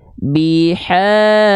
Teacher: biharu itu gak diayunkan nadanya, tapi kadarnya tetap 2 kali ayun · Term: mad tabi'i